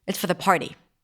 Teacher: Have you noticed that I did not pronounce the R?